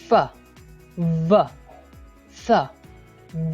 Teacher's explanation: partially blocked the air in the vocal tract and then releasing it gradually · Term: fricatives